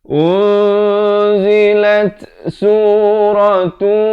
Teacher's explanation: di ujung itu dia ada bunyi itu sikit, bunyi angin itu, bunyi hamas dia panggil